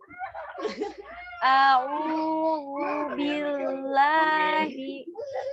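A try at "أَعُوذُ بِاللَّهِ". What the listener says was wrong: Nah, itu sudah lebih baik ya, tapi hati-hati huruf dalnya tidak tebal ya. Zu, bukan zu, tidak ditekan zu. Ujung lidahnya itu kuncinya begini. Ujung lidahnya itu tidak ditekan ke ujung gigi seri atas, hanya menyentuh saja.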